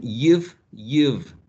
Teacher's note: Labiodental, right? The teeth and the lips.